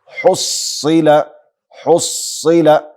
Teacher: صاد مشدد حرف ده قوت سره ویل سي